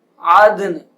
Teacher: نون دو زیر نین عد نین عد نین وقف عدن. نون کی آواز آئے گی لیکن غنہ نہیں کیا جائے گا اس پہ